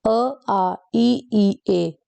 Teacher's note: जिनको बोलते समय हमारा जो होठ होते हैं वोह गोलाकार नहीं होते हमारे होठों की शेप गोल नहीं बनती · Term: अव्रत मुखी स्वर